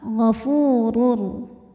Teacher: Huruf ra dibaca secara tafkhim sebab berharokat dhammah tanwin, maka bacanya tebal.